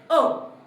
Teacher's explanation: मध्ये जिभेच्या मध्यापासून अ हा स्वर आपल्या तोंडातून बाहेर पडतो